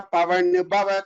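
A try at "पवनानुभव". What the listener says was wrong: Just again the Mahapranas. Pavana bhava. Bha is Mahaprana.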